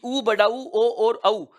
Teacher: ऊ, बड़ा ऊ, ओ और औ, ये 4 स्वर होते हैं जो वृत्ताकार स्वर होते हैं, ओष्ठाकृति को गोल कर देते हैं। इन स्वरों के उच्चारण में होठों का आकार गोल होता प्रतीत होता है।